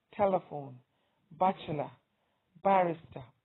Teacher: three-syllable words that have the stress on the first syllable include telephone